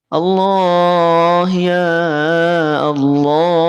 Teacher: lafaz Allah itu tebal dibaca tafkhim